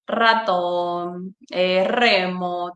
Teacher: todas estas palabras que ya van con una vibrante múltiple, fuerte